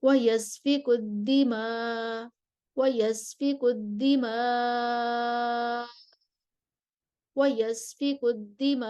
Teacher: कसर हस्फ़े हमज़ा के साथ, फिर तवसुत हस्फ़े हमज़ा के साथ, और फिर तूल हस्फ़े हमज़ा के साथ।